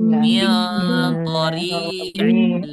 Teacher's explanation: Memasukkan suara nun ke huruf setelahnya. lam Ya, yang seharusnya nih, yang seharusnya di sini ada suara nunnya, tapi dia melebur. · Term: idgham bila gunnah